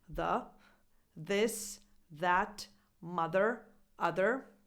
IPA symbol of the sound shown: ð